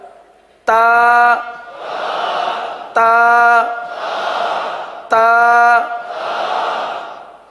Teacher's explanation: त तीनों का एक ही मखर है यह रफ तया है जबान की नोक और ऊपर के दांतों की जड़ से अदा होते हैं